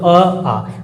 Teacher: तो कंठ से उच्चरित होते हैं, कंठ से उच्चरित होने के कारण अ और आ स्वर को कौन सा नाम देंगे हम, कंठीय स्वर